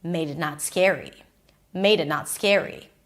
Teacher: So, she goes really low in pitch.